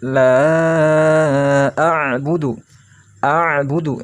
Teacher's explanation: Lalu ada a'budu, ain. Ingat ada ain, ainnya bersukun. Bila ain sukun, maka sama seperti halnya lam sukun. Ditekan bacanya.